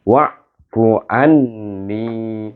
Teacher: Mana yang ada tasdid itu dibacakan. Iaitu nun tasdid kena baca dengan wajibul gunnah dengan gunnah.